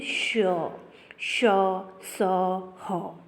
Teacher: इन व्यंजनों को उच्चारण करते समय मुंह में हवा आपस में टकराहट, गर्मी पैदा करती है, इसे ऊष्म व्यंजन कहते हैं। ये 4 होते हैं, जैसे श, श, स, ह।